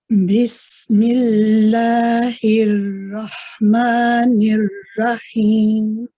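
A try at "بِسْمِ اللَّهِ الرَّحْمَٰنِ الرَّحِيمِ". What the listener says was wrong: It was better when you say Ar-Rahmanir Rahim. The ra here, the joining one, you've made it light. So if we can try and make that heavy.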